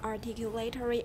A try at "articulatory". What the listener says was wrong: Okay, that's kind of British. We don't say articulatory. Where's the stress? Second syllable, articulatory.